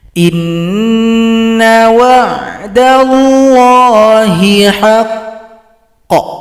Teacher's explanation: kalau berhenti maka huruf qaf disukunkan, tunggu 2 ketukan baru dipantulkan